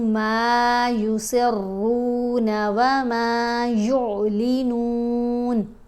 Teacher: را کو یہاں موٹا پڑھیں گے اور تھوڑا کھینچ کر بھی پڑھیں گے کیونکہ واو ساکن ہے پیش کے ساتھ، حرف مدہ ہے۔